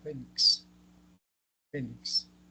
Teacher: Presentan la mayor fuerza de voz en la penúltima sílaba. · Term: graves o llanas